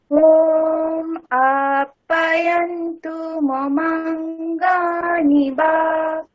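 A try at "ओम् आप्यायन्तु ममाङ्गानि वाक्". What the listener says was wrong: আটা দীর্ঘ শোনা গেলেও পিয়া কিন্তু দীর্ঘ শোনা যাচ্ছে না। আপ্যায়ন্তু মমাঙ্গানি বাক। পিয়াটাকে টানুন।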